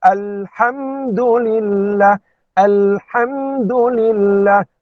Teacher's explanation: lam dibaca dengan jelas tanpa ada dengung ataupun tidak ada juga qalqalahnya, dan mim juga baca dengan izhar